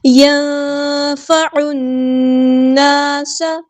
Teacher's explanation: نون ساکن کے بعد کو ہم یہاں پہ چھپا دیں گے، اخفا ہو رہا ہے